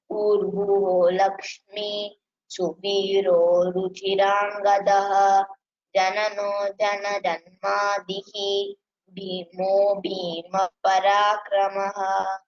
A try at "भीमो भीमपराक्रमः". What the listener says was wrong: I didn't hear Lakshmi Visarga there. I'm not sure if you pronounce, which is good. Lakshmi, then maybe you can give little more stress on Mahaprana. Bhimo Bhima Parakramaha.